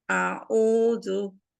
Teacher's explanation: Ain dari tenggorokan bagian tengah, au, jadi ada sifat bainiahnya